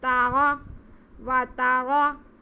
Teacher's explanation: ذہب اللہ بنورہم، ذہب اللہ بنورہم وترکہم، تا پہ زبر، را پہ بھی زبر، را پہ زبر ہو تو را موٹا پڑھا جاتا ہے، اس لیے ہم یہ را بھی موٹا پڑھیں گے.